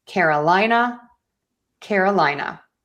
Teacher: But because we're working a little bit more on unstressing things, let's think about really just having the main stress on the lie